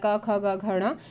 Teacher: क वर्ग होता है क ख ग घ ण ये कंठ से बोला जाता है